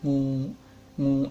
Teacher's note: Ngu terdiri dari konsonan kelas rendah eng ditambah vokal panjang u, maka nada yang dihasilkan yaitu nada datar ya.